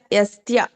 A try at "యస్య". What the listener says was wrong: అది తావత్తు కాదు అది జస్ట్ యస్య యస్య